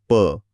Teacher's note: ओठ न चिकवता प नाही, हे तर शक्यच नाहीये. प म्हणायला ओठ बंद करून हवा अडवावीच लागते.